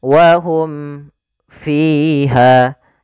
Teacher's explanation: izhar syafawi jelas suara mimnya dan tidak boleh ditahan